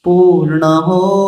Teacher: पूर्ण बहुत लंबा नहीं खींचना है, पूर्ण हो।